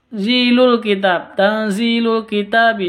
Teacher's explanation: Zi panjang dua ketuk karena Ya Sukun diawali dengan kasrah